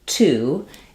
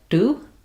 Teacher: the word to is going to have a burst of air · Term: aspirated T